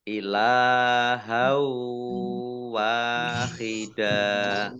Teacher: fathah tanwin bertemu dengan huruf wawu, bacaan idgham bi gunnah. Idgham masuk bi dengan gunnah mendengung. Ya, mendengung wawu.